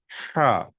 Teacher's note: یہ ہا جو ہے یہ ہماری نچلی جو حلق ہوتی ہے، حلق کا جو نیچے کا حصہ ہوتا ہے وہاں سے نکلنا چاہیے، اوپر سے نہیں، ایک دم نیچے، جو ایک دم حلق کا جو نیچے کا حصہ ہے بالکل وہاں سے یہ ہا کا لفظ نکلنا چاہیے